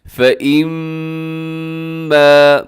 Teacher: میم مشدد ہے، یہاں پر آپ نے غنہ کرنا ہے اور اس کو لمبا کرنا ہے کیونکہ الف بھی ساتھ ہے۔